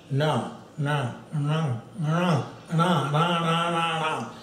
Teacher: you try to say Na, and then move the tongue, retroflex it. So Na, keep moving higher up.